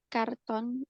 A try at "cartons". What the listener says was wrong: Cartons, S-nya kurang.